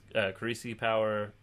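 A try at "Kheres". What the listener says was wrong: That's not how you say that. There's no E at the end of it. It ends in an S.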